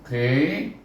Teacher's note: terangkat pangkal lidah kita menyebutnya qi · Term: qaf